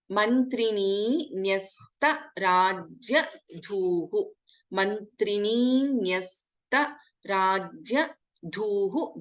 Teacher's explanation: Dha is a Mahaprana.